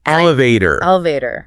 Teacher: Stress on the first syllable, and that T often becomes a flapped key, like a D sound.